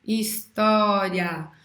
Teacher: Olha aí o I e o A juntinho, temos um ditongo, e ele é crescente porque o A é mais forte, termina mais forte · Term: ditongo crescente